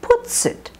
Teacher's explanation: The S of puts and the it are linked together. Puts it. When you have a pronoun that starts with a vowel and you have a word that ends in an S sound, it's often linked, an S or a Z.